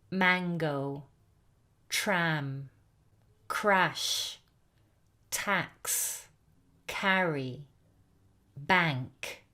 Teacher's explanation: All of these produce a, very open, short vowel sound. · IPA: /æ/